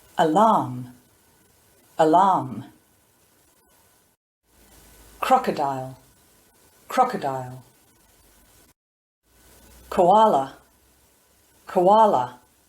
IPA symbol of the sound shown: ə